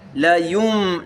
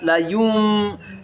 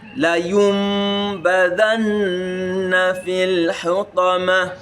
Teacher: It is applied in that the Nun Sakinah and Tanwin is articulated as as if it is mim. So when you hear that Nun Sakinah, it sounds as if it is mim that is before the Ba. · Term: Iqlab